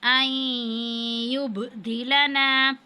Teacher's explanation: ربنا ان یبدلنا، اب نون ساکن کے بعد یا ہے، یہاں پہ حروف یرمنون میں سے ہے، تو ادغام کی صورت میں ہم غنہ کریں گے۔ ان یبدلنا، با ساکن اور یہاں پہ ہم قلقلہ کریں گے با پر